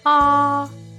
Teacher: tone it is just like singing the first tone is ah to say this tone you must keep your voice high and flat